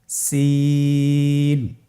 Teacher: জিহ্বার আগা সামনের নিচের দুই দাঁতের পেট ও আগার সঙ্গে লাগিয়ে উচ্চারিত হয়